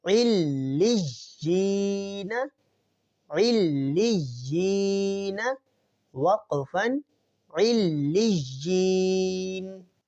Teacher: یا کو ہم سختی سے پڑھیں گے اور لام کو بھی ہم سختی سے پڑھیں گے کیونکہ دونوں کے اوپر تشدید ہے۔